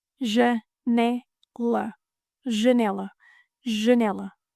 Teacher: Janela, closed A, open E, closed A.